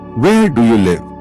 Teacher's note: Voice goes down at the end.